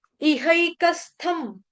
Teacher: थ के ऊपर जो बिंदी अनुस्वार उसका उच्चारण मैंने म से किया